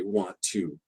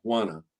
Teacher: two is a small word and it gets reduced to a schwa and and in special cases we even just take the T